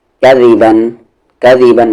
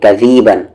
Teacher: دال کو کھینچیں گے نہیں